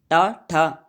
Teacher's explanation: टवर्ग को बोलते समय जिह्वा मुड़ती है